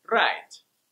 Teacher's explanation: Russians will often pronounce it with a trill